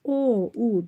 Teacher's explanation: Baxırıq dodaqlanan saitlərin içərisində o u dodaqlanan qalın saitdir